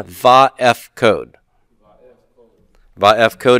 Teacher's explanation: So when we reject that Dagesh Forte, the short A vowel, pathak, compensatorily lengthens and becomes a kametz